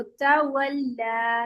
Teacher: लाम की अपनी जो सिफत है ना जो इसकी मुस्तकिल सिफत है वो इसकी बारीक है